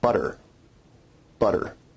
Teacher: notice where we write it with 2 t's in English that your tongue is producing a tap sound there rather than a full stop or plosive sound